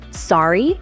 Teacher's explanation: saying sorry with a rising tone indicates you're asking for clarification politely